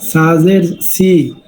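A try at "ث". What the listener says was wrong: এটা আপনি নিচের দাঁতে দিতে লাগে। নিচের দাঁতে, উপরের দাঁতে নামবে, উপরের দাঁতে।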